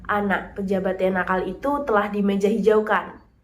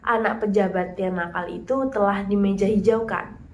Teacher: perbedaan jeda yang agak lama antara anak dan pejabat pada kalimat 1 dan antara pejabat dan yang pada kalimat dua